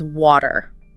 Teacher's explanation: It's just this tendency in American English to kind of soften a T sound when it falls between 2 vowel sounds. So instead of a sharp T, it sounds more like a quick D. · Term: flap T